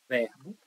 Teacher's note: a palavra verbo é paroxítona a sílaba tônica dela é ver de verbo